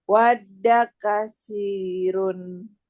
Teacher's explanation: sa-nya di ujung lidah ya, kena ujung gigi seri